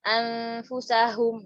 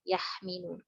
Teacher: Hum. Ha dan mim. Ha di tenggorokan, mim di bibir. Wah, jauh sekali ya. Ujung ke ujung. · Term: mutabaidan